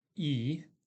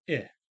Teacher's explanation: the English vowel E is normally produced longer than the vowel I